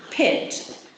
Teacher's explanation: if I say pit you've got this puff of air it's an as aspiration that comes from the fact that it's